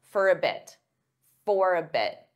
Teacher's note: again that flat t on bit because I'm not saying bit for a bit for a bit